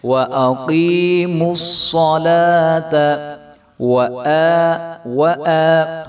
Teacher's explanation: وَأَقِيمُوا الصَّلَاةَ، اور میم کو ہم صاد کے ساتھ ملائیں گے تو صاد موٹا حرف ہے اور صاد کو جو ہے ہم خوب موٹا کر کے پڑھیں گے۔ وَأَقِيمُوا الصَّلَاةَ حمزہ کے اوپر کھڑا زبر ہے تو اس کو ہم ایک الف کے برابر لمبا کریں گے۔